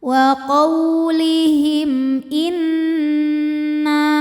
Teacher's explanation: Cara bacanya dengung, jadi bunyi n tahan sampai ada suara masuk hidung. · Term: nun musyaddadah